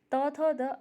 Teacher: त थ द आपका दंत्य व्यंजन में आता है, दंत्य में।